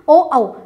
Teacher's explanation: जब आप ओ बोलते हो तो आपके कंठ से आवाज आती है, और मुंह खोलते हो, ओष्ठ खोलते हो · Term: कंठोष्ठ